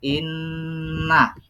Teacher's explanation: Inna itu dibaca berdengung. Inna. Khalaqnakum, huruf qaf itu adalah dibaca qalqalah.